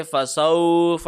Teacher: واو لین کا قانون لاگو ہوگا، لمبا نہیں کریں گے ۔ فسوف، ایسے نہیں ہوگا، فسوف، نسلیہ، صوت کو موٹا کریں